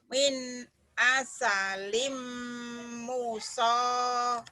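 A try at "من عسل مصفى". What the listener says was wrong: Nyamber. Enggak panjang, nyamber. Nyentak, bentak aja Bu, hentak situ. Samber dan double.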